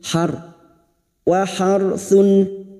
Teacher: ra sukun yang didahului fathah kita baca tafkim